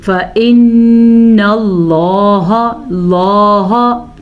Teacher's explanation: نون کو غنہ ادا کرے کیونکہ نون پہ شد ہے